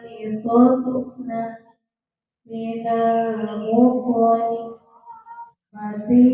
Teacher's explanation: ujung lidah menyentuh pangkal gigi serian atas